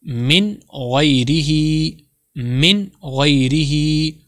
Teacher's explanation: نون ساکن کو ظاہر کر کے بلا غنہ کے پڑھیں گے. اس کو ظاہر کر کے پڑھیں گے، غنہ نہیں کریں گے.